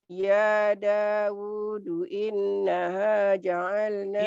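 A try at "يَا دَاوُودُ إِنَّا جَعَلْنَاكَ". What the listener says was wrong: Inna enggak ada hanya. Inna.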